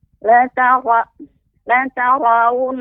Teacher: Ketika waw dan berdomah lagi la tarawun, kemudian kita harus menjaga huruf ra Ibu. Ra harus tetap dalam keadaan tebal.